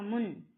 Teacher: முன் அப்படிங்கும் போது நாவின் நுனி மேல்வாய் அன்னத்தின் முன்பகுதியை தொடுது.